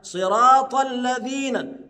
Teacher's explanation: وخد بال حضرتك، الذين احنا اتفقنا على ان الذال تخرج من طرف اللسان مع طرف الاسنان